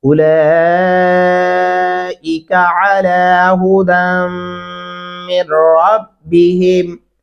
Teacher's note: لام کے اوپر 4 الفی مد ہے، ہم اس آواز کو 4 الف کے برابر تک لمبا کرتے رہیں گے · اولائکا بولتے ہیں، کا نہیں کرنا، اولائکا علی ھدی من ربہم، دال کو میم کے ساتھ ملانا ہے، جو درمیان میں نون ہے اس کو چھوڑ دیں گے